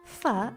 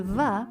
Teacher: you make fa and va by putting your bottom lip against your top teeth. The only difference is that your throat vibrates when you say va.